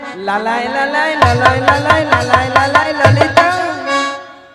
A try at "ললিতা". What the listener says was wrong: মাসি ওটা লালাই লালাইও নয় আর ললয় ললয়ও নয়, বলো ললিতা। বলো ললিতা, ভালো করে উচ্চারণটা করো না।